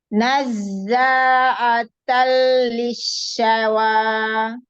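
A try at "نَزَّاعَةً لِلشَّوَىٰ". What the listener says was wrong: Naikkan lagi, itu masih makharijul huruf hamzah. Nazza'atal huruf shin ya. Nazza'atal lisyawa. Ya, dibedakan huruf ain dengan hamzah ya. atal maka dia hamzah. Atal ya.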